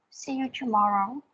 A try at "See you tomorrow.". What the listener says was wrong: Okay, put more intonation. See you tomorrow.